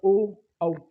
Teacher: हमारा जो होट है वो इनके यानी वृत यानी गोल गोल हो जाते हैं